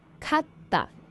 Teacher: So when you pronounce it, you should make a slight pause between ka and ta. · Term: double consonants